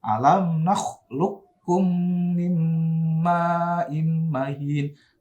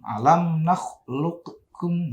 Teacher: Nah, untuk yang alam nakhluqkum ini ada dua versi bacaannya ya. Boleh idgham mutaqaribin langsung masuk ke kaf ya. Boleh dibaca idhar. Alam yang pertama boleh dibaca idgham mutaqaribin.